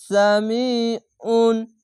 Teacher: গলা মোটা করে গলা চিপে পড়তে হবে আইনটিকে